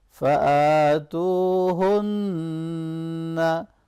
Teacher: फ़आ, यहाँ खड़ी ज़बर है, लंबा करेंगे। तू, वो मद्दा है, इसको भी लॉन्ग करेंगे।